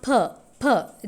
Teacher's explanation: per in english made up of bilabial plus stop plus voiceless · per sound in english is considered to be bilabial bilabial navarna it is a closing movement of both lips